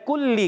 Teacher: کاف کو باریک، لام کی زیر کو کھینچنا نہیں ہے